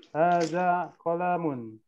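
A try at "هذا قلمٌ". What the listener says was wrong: Nah, kolamnya pendek. Hadza qalamun, jangan dipanjangkan.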